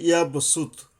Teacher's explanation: সিন মানে এখানে দুই দাঁতের আগার থেকে আসবে, কিন্তু শীর্ষসহ আসবে, কিন্তু পাতলাভাবে আসবে। · নিচের দুই দাঁতের আগা থেকে জিহ্বা আইসা মেশবে